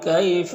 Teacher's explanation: یہاں پر یا ساکن سے پہلے کاف کے اوپر زبر ہے تو یالین ہوگا، یالین کو نرم آواز کے ساتھ جلد پڑھتے ہیں